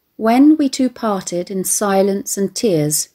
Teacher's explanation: diddy whish due to the falling nature of the rhythm where a stressed syllable is followed by two unstressed syllables makes it ponderous and heavy yet relentless at the same time